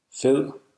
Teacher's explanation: The soft D is often perceived as an L sound, L, by non-native speakers. It's typically a velarized laminal alveolar approximant.